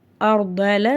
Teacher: சுக்குன் பெற்ற ராக்கு முன்னாடி ஜபர் இருக்கு அந்த ராவ நம்ம வல்லினமா ஓதணும்